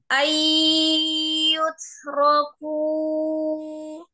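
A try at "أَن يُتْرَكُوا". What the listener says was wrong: pendek. Tidak panjang sunya, sunya pendek ya.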